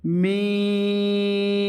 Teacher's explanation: দুই ঠোঁটের শুকনা অংশ থেকে